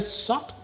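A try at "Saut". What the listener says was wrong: I thought French don't pronounce the last alphabet.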